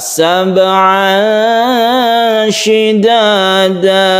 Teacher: Tahan di tanwin bertemu dengan shin ikhfa